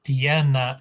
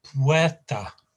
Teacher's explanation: piana is leg, and that's got the stress at the beginning